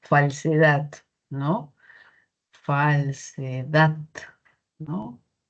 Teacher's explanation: Mayor fuerza de voz justamente en esta última sílaba, que sería la sílaba tónica. Si fuese en otra, quizá la fuerza de voz sonaría distinto, ¿no?